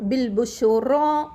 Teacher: இந்த ரா சொல்லக்குள்ள நல்லா வல்லினமாக வாயை வந்து ரவுண்ட் ஷேப்பில் வச்சுட்டு நம்ம சொல்லணும். பில் புஷுரா அப்படி சொல்லணும்.